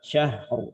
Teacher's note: Ro-nya tebal atau tipis? Karena huruf sebelumnya fathah, maka ikut tebal.